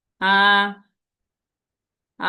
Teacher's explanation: first টোনটা বলার সময় আমাদের শব্দটা কি ফ্ল্যাট ভাবে যাবে